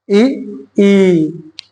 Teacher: दीर्घ स्वर है, उसका जब उच्चारण करेंगे ना थोड़ा सा ज्यादा टाइम लगेगा, ह्रस्व स्वर के तुलना में ज्यादा समय लेता है।